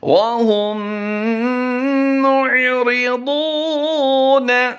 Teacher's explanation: ضاد کی ادائیگی ہم نے پر کرتے ہوئے لمبا کر دینا ہے